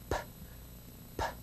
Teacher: try the the sound made by the letter p p p no vibration these are voiceless sounds